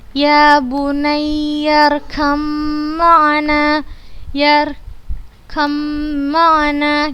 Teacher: karena huruf mim dibaca dengan gunnah yang dipanjangkan